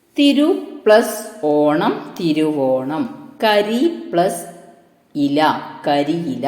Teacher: 2 സ്വരാക്ഷരങ്ങൾ തമ്മിൽ അടുത്തടുത്ത് വരുമ്പോൾ ഉച്ചാരണ സൗകര്യത്തിനായി അവയ്ക്കിടയിൽ പുതിയ ഒരു വ്യഞ്ജനം കയറി വരുന്നു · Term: ആഗമസന്ധി